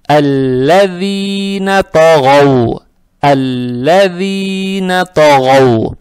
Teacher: Далее стоит буква даль, она межзубная, ее надо правильно произносить. Эту касру мы должны тянуть 2 раза за счет буквы я без огласовок.